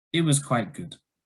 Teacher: having just a falling intonation or kind of a flat intonation can sometimes show there's something wrong with the person